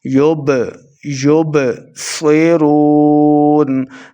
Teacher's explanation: با حروف قلقلہ سے ہے ساکن ہے تو خوب واضح کریں گے یعنی قلقلہ کرنا ہے